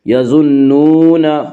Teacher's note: یظنون، واو مدہ وہ واو جو ساکن ہو اس سے پہلے پیش ہو، واو مدہ کو 1 الف کے برابر کھینچ کر پڑھیں گے